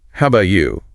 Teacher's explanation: With a downward inflection because she's going to follow up with a more specific question. The tone of voice sets up the next part of the conversation.